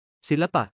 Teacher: ศิลปะ meaning art drops the N sound